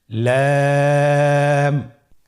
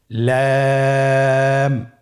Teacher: পরবর্তী হরফ লাম। লাম হরফটি উচ্চারণের ক্ষেত্রে অবশ্যই বারিক হবে এবং 3 আলিফ টেনে পড়তে হবে।